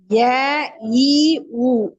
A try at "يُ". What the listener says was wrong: ஊ அல்ல, யூ யூ. என்ன வித்தியாசம் வந்துச்சு ரெண்டுக்கும்? எஸ், அலிஃபுக்கு நாக்கு அசைக்கப்படாது. ஐ அடுத்த நாக்குக்கு இ ஈய ஃபோர்ஸ் பண்ணணும். ஆரோ ஐத்த இன் இன் இன் கான இன்.